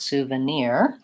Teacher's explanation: for souvenir we we stress the last syllable so the first two syllables are short